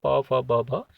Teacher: और सबसे लास्ट में आती हैं ओष्ठ, ओष्ठ यानी कि होठों के स्पर्श से प, फ, ब, प वर्ग वाले जो होते हैं प, फ, ब, भ, ये ओष्ठ में आते हैं।